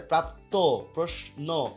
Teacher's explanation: এই যে শব্দের শেষে যে যুক্ত বর্ণ, শব্দের শেষে যদি কোনো যুক্ত বর্ণ থাকে, তাহলে সেই যুক্ত বর্ণ থাকলে সেই ক্ষেত্রে দেখা যাচ্ছে অন্তিম মানে কি, শেষ আর কি, অন্তিম অয়ের উচ্চারণ কিন্তু ওকারের মতো হয়। এই যে এখানে যুক্ত বর্ণ হয়েছে, তাহলে এখানে শেষে অটা ও হয়ে যাবে।